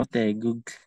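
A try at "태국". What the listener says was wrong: Hindi po. Teguk. Kasi po K po basta nasa final position.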